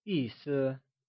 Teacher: 意 is pronounced using a falling tone and 思 is pronounced using a neutral, soft fading tone. The word meaning translates to 意思.